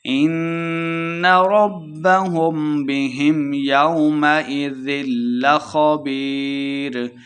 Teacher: نون مشدد ہے، غنہ کر کے پڑھیں گے۔ ربهم بهم لمبا بالکل نہیں کرنا۔